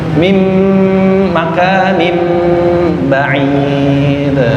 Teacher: Setiap mim tasdid dua harakat ditahan dulu